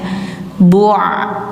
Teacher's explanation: ain itu suaranya bainiyah, pertengahan antara mengalir dan ditahan. Jadi bacanya bu', nggak bu tapi bu' gitu ya.